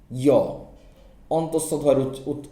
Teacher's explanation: আমরা যদি রস্বই বা দীর্ঘই এই ধ্বনির পরে একটা অ ধ্বনি দ্রুত উচ্চারণ করি, য়, অন্তস্থ জয়ের উচ্চারণ আসে।